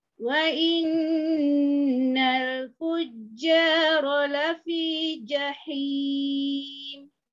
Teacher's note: pada fujja tengah lidah ya diangkat ke langit-langit atas